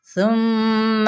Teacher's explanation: بسم اللہ الرحمن الرحیم۔ ثم یہاں پہ میم پہ باقاعدہ طور پہ غنہ ہوگا، غنہ ایک الف کے برابر کرتے ہوئے